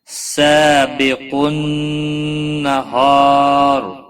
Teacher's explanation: سا الف مدہ ہے، ایک الف کے برابر کھینچ کر پڑھیں گے